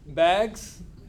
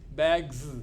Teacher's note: you are saying z sound at the end it's not s it is z